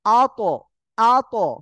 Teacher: জিহ্বার আগা সামনের উপরে দুই দাঁতের গোড়ার সঙ্গে লাগিয়ে উচ্চারণ করতে হয় যেহেতু এখানে সাকিন রয়েছে শক্ত আকারে লাগবে লেগে উচ্চারণ হবে আত